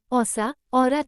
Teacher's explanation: यह अर्धविवृत वृत्तमुखी ह्रस्व पश्च स्वर है। इसके उच्चारण में जीभ का पिछला भाग कुछ ऊपर उठ जाता है।